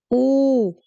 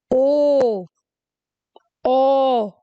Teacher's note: हुआ ओ गोल हुआ ओ ओ ये सबको उच्चारण करते समय इन सब स्वरों को बोलते समय मेरे जो मुंह है मेरे जो लिप्स है ऑटोमेटिक राउंड शेप में आ गए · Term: वृत्त मुखी स्वर